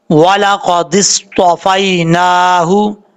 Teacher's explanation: نون کھڑا زبر نا، ہا پیش ہو، والا قادس طوفائی نا ہو، نون کے اوپر کھڑا زبر ایک الف کی مقدار لمبا کر کے پڑھیں گے